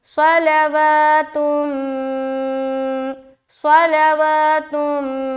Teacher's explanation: صاد کو موٹا میں نے نکالا کیونکہ صاد حروف مستعلیہ میں سے ایک ہے، لہٰذا اسے موٹا ادا کرنے کا حکم ہے تو موٹا ادا کریں گے۔ · لا باریک وا میں کھینچیں گے کیونکہ کھڑا زبر ہے